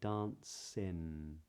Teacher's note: You might be bringing the tip of the tongue up and saying ‘dancin’.